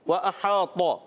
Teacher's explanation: واو کی ادائیگی ہونٹوں کی گولائی سے